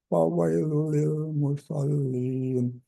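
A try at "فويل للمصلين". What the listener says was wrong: Fawailul. Itu ada tasydid, ditekan dulu. Fawailul lil musallin.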